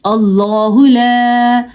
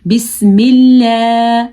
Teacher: اللہ کا نام جب زبر کے ساتھ آئے اور پیش کے ساتھ آئے تو پر پڑھا جاتا ہے، جب زیر کے ساتھ آئے تو باریک پڑھا جاتا ہے